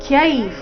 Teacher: ವಿಸರ್ಗದ ಉಚ್ಚಾರಣೆ ಅರ್ಧ ಫ ರೀತಿ